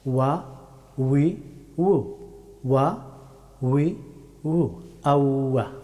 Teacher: ওয়াও হরফটি উচ্চারিত হয় দুই ঠোঁটকে রাউন্ড করে